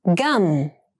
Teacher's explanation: gum has the bilabial M sound